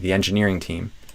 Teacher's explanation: I think I would usually stress engineering more than team, the engineering team.